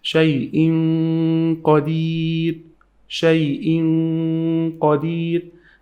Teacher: I hide the sound of the noon into the qaf letter in the next word. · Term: ghunna